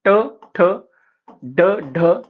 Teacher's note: मूर्धेला जिभेचा स्पर्श होऊन उच्चारल्या जाणाऱ्या वर्णांना मूर्धन असे म्हणतात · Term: मूर्धन्य